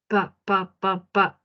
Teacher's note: Mis articuladores se pegan por completo. Oclusivo. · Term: Bilabial